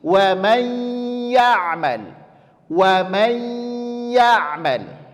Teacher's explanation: Menyempurnakan penyebutan idgham bi gunnah pada huruf ya yang pertama, bunyikan dia ke huruf i. Kesalahannya adalah bunyinya ke huruf e.